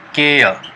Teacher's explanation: R E का यहाँ पर प्रोनाउंसिएशन नहीं होगा, जो लास्ट में रहेगा आर या आर ई रहेगा उसको हम नहीं उच्चारण करेंगे नियम के मुताबिक।